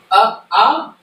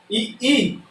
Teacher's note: कंठ क्या है, आ, तालु क्या है, ई, मूर्धा क्या है, री, और ओष्ठ क्या है, उ